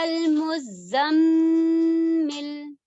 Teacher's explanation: زا کا مخرج اچھے سے ہے کہ اس میں بزنگ ساؤنڈ آنی چاہیے، پلس آپ دیکھیں کہ زا مشدد ہے، تو ہمیں اس میں شدہ کی جو ایک مضبوطی ہوتی ہے وہ لے کر چلنا ہے.